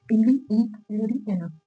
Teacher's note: बोलते में अपने जीभ के आगे का हिस्सा मूवमेंट कर रहा है, तो इसे बोलेंगे हम अग्रस्वर